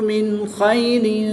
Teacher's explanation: نون ساکن کے بعد خا حروف حلقی میں سے ہے تو یہاں پر اظہار ہوگا یعنی غنہ نہیں کریں گے بلکہ نون ساکن کو خوب ظاہر کر کے پڑھیں گے